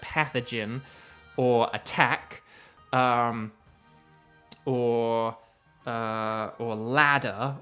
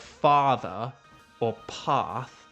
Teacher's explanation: Whereas if I say a word like pathogen, which is similar to path, but if I say a word like pathogen or attack, or ladder or something like that, then I'm saying it with like an ah sound. So there's the short, sharp ah, and there's the sort of more drawn out ah sound